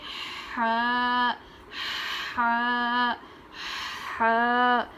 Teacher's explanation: حلق کے نچلے حصے سے پڑھیں گے، آواز اچھی نکلے گی، ہا ہا ہا۔ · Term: بڑی ہا